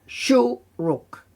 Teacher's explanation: we have a shuruk, so we can hear that it's a shorter U sound